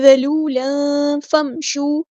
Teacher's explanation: یہ تنوین کے بعد فا ہے، تو اس کا مطلب یہاں پہ اخفا ہو رہا ہے، تنوین کے نون کی آواز کو ہم نے چھپانا ہے